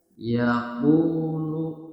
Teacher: ya wau sukun yang sebelumnya harakatnya adalah D u-nya ini nah u-nya ini dibaca panjang panjangnya dua harakat